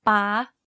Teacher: You can hear that my pitch went high when saying this word. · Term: high tone